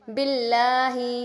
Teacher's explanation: لفظ اللہ کو یہاں پہ باریک پڑھیں گے۔ لفظ اللہ کا قاعدہ ہوتا ہے، بعض جگہوں پر جو ہے اللہ کو پر کر کے موٹا کر کے پڑھتے ہیں اور بعض جگہوں پر باریک پڑھتے ہیں۔